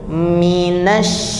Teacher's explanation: huruf syin itu ada hembusan nafasnya ya jadi jadi membacanya itu dihembuskan dulu minas baru ke sini